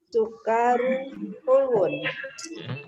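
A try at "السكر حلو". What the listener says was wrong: Ulangi lagi, kafnya pendek. As-sukaru.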